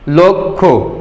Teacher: অধ্বনির পর ক্ষীয় থাকলে সেই অধ্বনি ও এর মতো উচ্চারিত হয়। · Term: সংবৃত উচ্চারণ